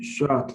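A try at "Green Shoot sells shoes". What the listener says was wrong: Shoots. So the double O makes an ooh sound. Green shoots.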